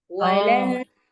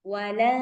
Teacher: Jangan jelas suara nunnya